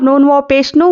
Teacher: नून वाव पेश नू वाव मद्दा है, एक अलिफ के बराबर खींचेंगे